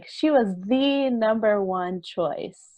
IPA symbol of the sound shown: ði